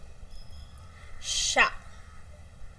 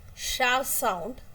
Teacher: Here sha is voiced and it's palatal-alveolar fricative because air comes from the soft palate comes through the and the and there is a narrow passage in the below this teeth ridge.